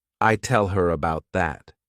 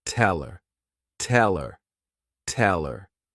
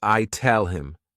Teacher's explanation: when these words go unstressed people tend to just omit the letter H and the sound that it corresponds to